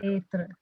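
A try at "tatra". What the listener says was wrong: Okay, you don't pronounce it as teatra. That is wrong.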